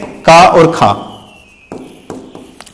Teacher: जब आप का और खा का उच्चारण करेंगे तो वाइब्रेशन नहीं होगी, कंपन नहीं होगी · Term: अघोष